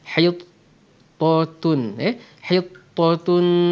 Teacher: Di sini hati-hati sebab ta tebal, tun nipis, jadi kita kena agihkan ketebalan dan kenipisan mereka dengan berhati-hati.